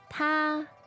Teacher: Okay, so this ta, first tone, means he.